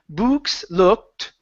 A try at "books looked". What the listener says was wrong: Open up your mouth on books just a little bit more.